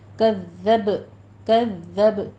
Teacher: ذال پہ تشدید ہے، سختی کیجیے اور با پہ قلقلہ کرنا ہے